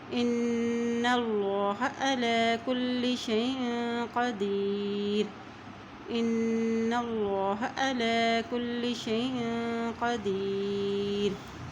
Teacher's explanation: اب یہاں دیکھیں الف کی زیر کو نون کے ساتھ ملائیں گے کیونکہ نون کے اوپر شد ہے، اور جب نون کے اوپر شد آ جاتی ہے تو وہاں پر غنہ ادا کیا جاتا ہے۔ اور دیکھیں اللہ کے نام سے پہلے زبر آ گیا ہے تو یہاں اللہ کا نام بھی موٹا ادا کیا جائے گا